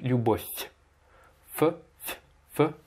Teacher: Il faut bien mouiller le son feu à la fin en faisant любовь.